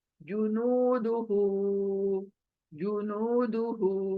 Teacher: जू जल्दी, नू खींचेंगे वाव मद्दा की वजह से, दू जल्दी, हु खींचेंगे उल्टी पेश की वजह से